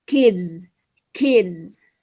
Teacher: jika environment atau lingkungan di sekitarnya adalah bunyi voice, maka akan menjadi bunyi z